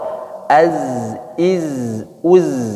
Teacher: ketika zainya sukun, jangan dipantulkan karena bukan huruf qalqalah.